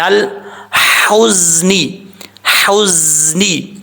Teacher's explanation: زا جو ہے وہ سٹی کے ساتھ پڑھا جائے گا، بغیر سٹی کے پڑھیں گے تو یہ زا اپنے مخرج سے ادا نہیں ہوگا۔